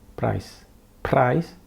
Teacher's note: the r is still there but it's barely noticeable